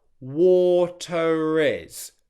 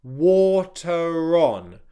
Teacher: If the next word after water begins with a vowel sound, you're going to get a subtle connecting R to join the two words together.